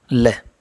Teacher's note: जिसके उच्चारण में जीवा का अगला भाग मसूड़े को छूता है और वायु पार्श्व आसपास से निकल पार्श्विक कहलाते हैं